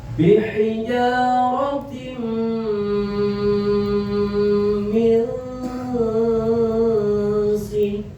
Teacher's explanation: Dimasukkan tanwin kasroh tersebut ke huruf mim dan ditahan dulu minimal 2 harokat, lebih dari 2 harokat itu lebih bagus ya, supaya bisa membedakan mana hukum izhar halqi, mana huruf idgham. · dimasukkan tanwin kasrah tersebut ke huruf mim dan ditahan dulu minimal dua harakat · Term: idgham biguna